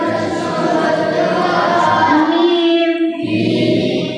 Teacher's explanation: দুই ঠোঁটে শুকনো অংশ হইতে উচ্চারিত হয়